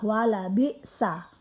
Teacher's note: hamzah atau alif tempatnya dari tenggorokan bagian depan.